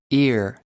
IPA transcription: ɪr